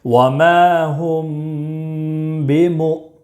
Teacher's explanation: حمزہ ساکنہ ہے اس لیے جھٹکا دے کر پڑھیں گے